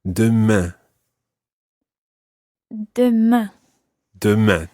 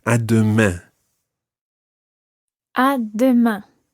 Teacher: It's not à demain and then leave it open. You've got to finish it off with a nasal sound.